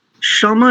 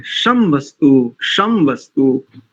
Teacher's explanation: संहिता की दृष्टि से भी क्षमा नहीं बोलेंगे, क्षमा वस्तु नहीं बोलेंगे, शम वस्तु, क्योंकि मकार आधा है